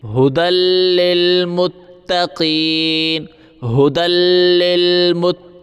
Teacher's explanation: دال کو ہم لام کے ساتھ ملائیں گے، لام کے اوپر تشدید ہے ، دال لام دو زبر دل، لام لام زیر لل، ھدی،